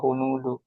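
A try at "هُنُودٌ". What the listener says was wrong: Hunudun harus bertanwin ya. Hunudun.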